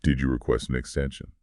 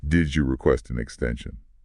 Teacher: Remember the rising intonation for the yes no question at the end.